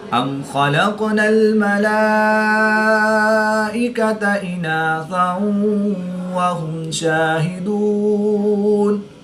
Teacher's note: کھڑی زبر کے بعد حمزہ اسی کلمے میں ہے تو یہاں پر مد متصل ہوگی، 3 سے 5 الف تک کھینچ کر پڑھیں گے۔